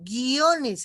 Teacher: Aquí en guiones, por ejemplo, no se está resaltando, no, guiones, aquí en la I, la I se está apagando y la O es la que resalta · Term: diftongo creciente